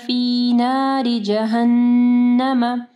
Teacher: نون مشدد ہے، ٹھیک ہے، یہاں پہ کامل غنہ کرنا ہے